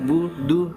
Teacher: Tipiskan ya, budu, dal sama ba tipis dia ya. Jangan terlalu dorong.